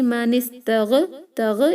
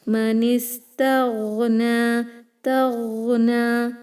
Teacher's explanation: Rikhava means the flowing of sound. You should not stop it and do qalaqala there.